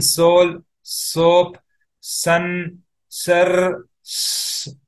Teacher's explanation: This sa does not have any diacritic marks like in soul, soap, sun, sir, s. So it's all hissing sound where the tongue is almost touching at the back of your upper teeth